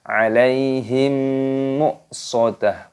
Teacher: Innaha 'alaihim, ya-nya sukun dibaca 'alai. Him, mim sukun bertemu dengan huruf mim, hukumnya dibaca idgham mimi. Di sini didengungkan alaihim muqsadah.